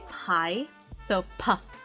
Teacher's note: The pa sound comes out of the air in your mouth. This is often called the aspirated sound. Aspirate means like getting air puffed out of your mouth.